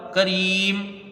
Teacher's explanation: मीम यहाँ पर साकिन हो जाएगी, वक्फ बिल इस्कान मद्दे आरिज़